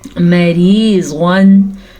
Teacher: अब रा को मैंने यहाँ पे बारीक पढ़ा है क्योंकि रा के नीचे ज़ेर है